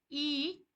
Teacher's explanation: उच्चारण स्थान है तालु और मात्रा के आधार पर दीर्घ स्वर है, क्योंकि हम सब जानते हैं दीर्घ मीन्स बड़ा और ये बड़ी ही है।